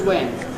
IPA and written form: w.e.n (when)